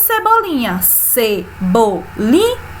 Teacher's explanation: Quanto ao número de sílabas, ela é polissílaba. Qual é a sílaba tônica? O li. E o li fica na penúltima posição. Portanto, ela é uma palavra paroxítona, porque a sílaba tônica é a penúltima.